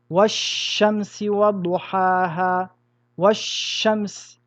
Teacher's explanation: Ici, un shin et avant un L. Nous allons donc rentrer le L dans le shin et mettre une shadda sur le shin. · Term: idgham